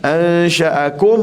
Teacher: matikan mim betul-betul tanpa kita dengung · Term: izhar syafawi